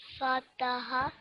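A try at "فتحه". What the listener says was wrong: So this ha sound is thick one. Fataha. MashaAllah, you try to give equal time to each letter.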